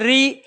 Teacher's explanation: ऐसे ही हम प्रयोग करें री में भी देखो जीभ कहाँ लग रही है, तालू में। री आगे वाला भाग फंक्शन कर रहा है, बीच वाला पीछे वाला जीभ का कुछ नहीं एक्टिव हो रहा है।